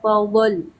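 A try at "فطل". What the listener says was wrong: Wabilun fadl. Fadl. Huruf to itu Bu ya, huruf to bukan huruf do. Huruf to itu bukan huruf do, bukan huruf to. Kan gak ada titiknya tuh kan?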